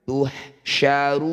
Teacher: Ru panjangkan 6 harokat, huruf terakhir sukunkan. Tuhsyaruna, ketika dihentikan tuhsyarun. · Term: mad arid lis sukun